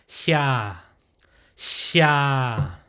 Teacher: it has an aspirated breathy sound mixed in with the word ya